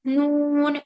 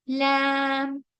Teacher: नून की आवाज नाक से आएगी लेकिन लाम की बिल्कुल भी नाक से नहीं आएगी